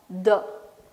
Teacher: Blade of the tongue, it will be touching your teeth ridge. The. Th.